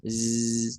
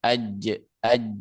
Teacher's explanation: huruf za itu kan di ujung lidah. Z, tuh. Sedangkan huruf jim kan di tengah-tengah lidah. Aj, tuh. Begitu juga huruf shin tidak akan tertukar dengan huruf sin.